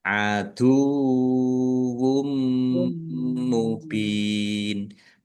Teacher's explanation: Kemudian domah tanwin bertemu dengan huruf mim. Bacaan idgham bighunah. Masuk dengan mendengung. Yaitu mendengung mim ditandai mimnya ada tasdidnya ditahan biar tampak mendengung.